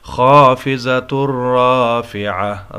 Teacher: را پر زبر ہے، موٹی پڑی جائے گی۔